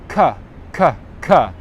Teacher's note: my lips are actually in the schwa position